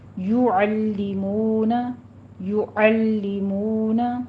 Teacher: پھر ہمارے پاس کفرو میں بھی را کے اوپر دیکھیے ضمہ ہے، اس کو پر بھی پڑھنا ہے اور آگے واو مدہ ادا کیجئے، 2 کاؤنٹ کرنا ہے. یعلمون یا کے پر ضمہ ہے، ہونٹ گول کیجئے